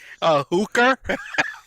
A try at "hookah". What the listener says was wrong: It's hookah. You didn't. You want to listen to the recording? You said hooker. No, you didn't. The one time that you're supposed to end the word with you decide to throw an ER in it.